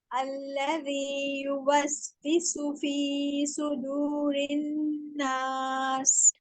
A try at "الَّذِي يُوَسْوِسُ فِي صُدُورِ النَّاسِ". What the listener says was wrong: تھوڑی سی اپنی پیش کے لیے جو ہونٹ ہے اور گول کر لیں. پیش کے لیے اور دو کے لیے.